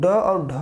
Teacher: किसी ध्वनि के उच्चारण में जीभ मूर्धा को छूकर झटके से नीचे आती है। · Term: उत्क्षिप्त व्यंजन